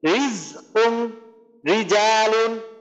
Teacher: মুখটা জেরের কারণে প্রসারিত থাকার কারণে এই রটা একটু প্রকৃতিগত ভাবে একটা পাতলা করে উচ্চারণ হচ্ছে